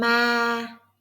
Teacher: Keep it long and flat. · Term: Flat Tone